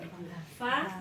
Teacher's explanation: fa itu mempertemukan ujung gigi seri depan atas dengan perut bibir bawah ya, mempertemukan ujung gigi seri atas ini ya, dengan bibir dengan sini bawah.